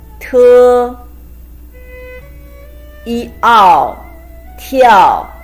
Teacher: The pronunciation is T, iao, tiao, combination of T and iao with the fourth tone. T, iao, tiao means jump or dance.